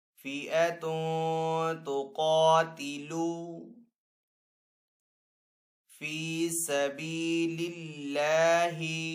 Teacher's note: قاف حروف مستعلی میں سے تو قاف کو یہاں پہ پر پڑھیں گے۔ فِئَةٌ تُقَاتِلُ فِی سَبِیلِ اللَّہِ، اللہ عز و جل کے نام کو یہاں پہ باریک پڑھیں گے کیونکہ پہلے والے حرف کے نیچے زیر ہے۔